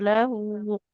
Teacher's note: di lahu ini cuman panjangnya 2 harakat saja